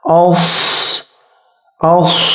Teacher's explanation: Shad sifnya hams harus keluar angin